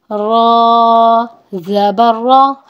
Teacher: را کے اوپر زبر ہے، را کو پر یعنی کہ موٹا پڑھا جائے گا